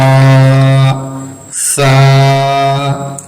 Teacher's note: जुबान की नोक और ऊपर के सामने वाले दो दांतों के किनारे से जब टकराएगा तो सा निकलेगा · इसे निहायत नरमी से अदा करें सीटी की आवाज बिल्कुल ना आए